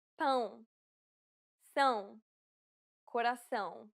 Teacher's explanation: It is similar to the ow sound in English, but with nasality.